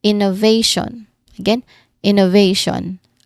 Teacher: Pay attention to the placement of the primary stress on the third syllable.